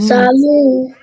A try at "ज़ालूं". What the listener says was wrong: लूं. Nasal sound. ज़ालूं. ज़ालूं.